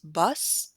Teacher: does not have voicing at the end its vowel therefore is not lengthened but it does have aspiration at the end